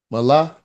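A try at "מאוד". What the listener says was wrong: That ain't no lamed. That's a left and a dalet. So that would say ma'od. That dot is above.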